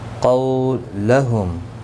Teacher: قولہم، قو واولین ہے، تھوڑا نرمی کے ساتھ کھینچ کر ادا کریں گے. میم ساکن کے بعد حمزہ ظاہر شفوی ہوگا.